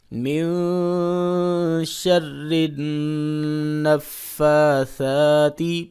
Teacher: را کو باریک پڑھیں گے کیونکہ اس کے نیچے زیر ہے